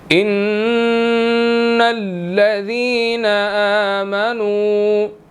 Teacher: نون جو ہے وہ مشدد ہے، ٹھیک ہے، نون مشدد ہے تو یہاں پر ہم نے غنہ کرنا ہے